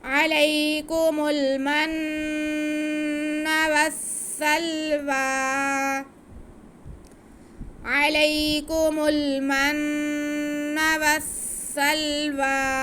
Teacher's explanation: وصل آگے واو پہ کھڑا زبر ہے، اس کو ہم ایک الف کے برابر کھینچ کے پڑھ لیں گے، یا سائلنٹ ہوگا.